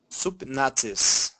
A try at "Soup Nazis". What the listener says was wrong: Too much. You're going Super Nazis. Super Nazis. We don't want that. Soup Nazis.